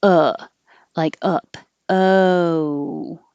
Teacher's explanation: one position but american o has two parts so there's movement you're starting actually more with the uh sound and that's when your tongue is low in the middle and pulled back